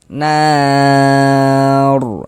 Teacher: Maka huruf rasukunnya dibaca tabkhim dibaca tebal sehingga pangkal lidah kita naik terangkat ke atas ketika kita mengucapkannya. Nah, ditebalkanlah huruf r-nya nar seperti itu.